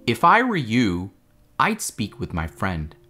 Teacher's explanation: you have a rising intonation on the first part if i were you and then a falling intonation on the second part i'd speak with my friend